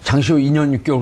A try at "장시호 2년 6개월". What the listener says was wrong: 그러니까 발음이 약간 붙여서 얘기하니까 쉼표를 줘야 되는데.